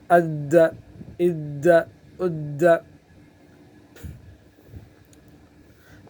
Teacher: قلقلہ پہلے سے ہے، مشدد حرف میں اور سختی ہوتی ہے تو اس میں گویا کہ سختی بڑھ جائے گی